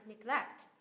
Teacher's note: Neglect, nhấn âm tiết thứ hai, neglect.